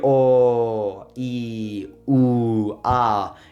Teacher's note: It doesn't necessarily have to be short, but rather it has to be a consistent sound. It doesn't bend up and down like in English